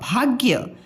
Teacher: भाग्य, भा आधा ग और य, भाग्य। भा और य की साउंड पूरी आ रही है, ग की कम आ रही है, इसलिए आधा है।